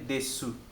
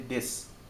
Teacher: Sons omitidos é legal. Esse U aqui no final, por exemplo, você não vai ler desu, você vai ler des.